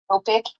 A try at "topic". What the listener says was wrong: Yeah, I heard like toe. It should be more like topic. Topic. Can you repeat that? So for those that are watching, it's kind of more of an ah sound. So topic.